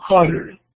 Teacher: Una cuestión que hacen los americanos o los estadounidenses al pronunciar esa T es que suena como una R.